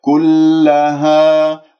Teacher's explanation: كلها، وهنا مد طبيعي، انتبه كلها ألف ساكن قبلها الهاء المفتوحة، أنا يجب أن آتي بحركتين مد طبيعي